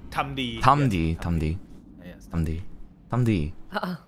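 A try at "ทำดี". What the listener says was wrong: Oh, making so much progress.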